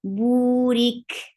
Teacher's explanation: Kaf with sukoon will get sifa of hams, and hams is a flow of breath.